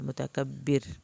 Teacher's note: را کو پتلا پڑھنا ہے کیونکہ پچھلے لفظ پہ دیکھیں زیر ہے